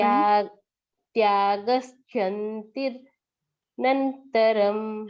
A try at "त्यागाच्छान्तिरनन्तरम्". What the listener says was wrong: छांतिर, छा, पूरा मुंह खोले, आ थोड़ा आ।